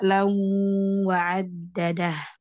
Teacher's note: tanwin bil fathi mudgham fil wawil maftuha bi ghunnah harakatain